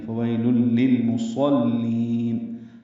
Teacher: صاد پر ہے لیکن لام باریک ہے، لام کو لمبا کریں گے